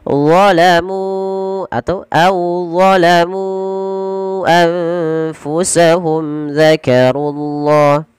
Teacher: Kemudian lafal dzakarullah, runya tebalkan karena dia ra tafkhim.